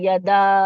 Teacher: پھر یا پہ، یا پہ اور دال پہ فتح ہے، اور اب اس پہ ہے مد منفصل، تو اس کو 3 to 5 کاؤنٹس پڑھیں گے